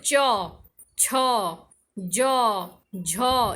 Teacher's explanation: और स्पर्शी संघर्ष होता है जिसमें उच्चारण करते समय स्पर्श भी हो और संघर्ष भी हो